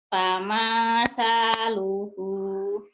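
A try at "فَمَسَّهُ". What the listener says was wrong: nggak ada yang panjang, ujungnya doang. Pamasa, ujung lidah. Pamasaluhu, pamasaluhu. Pamasaluhu.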